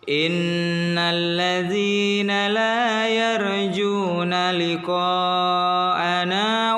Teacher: di liqa itu ada 6 harokat nak. Harus panjang bacanya 6 harokat.